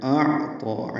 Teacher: اعطا عین سے ملانا ہے، عین ساکن ہے، حمزہ اقصی حلق سے اور عین وسط حلق سے ادا کرنا ہے. اعطا دونوں کی آوازیں ملانی نہیں ہیں، طا پر ہے اور 2 حرکات اس کو لمبا کریں گے، یا نہیں پڑھیں گے.